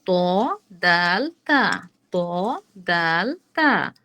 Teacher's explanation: সামনের উপরের দুই দাঁতের গোড়ার সঙ্গে লাগিয়ে ত দাল তা উচ্চারিত হয় একেবারে নরমালি আমরা কিন্তু এটা করে ফেলতে পারি সামনে দুটি ইনসিসরসের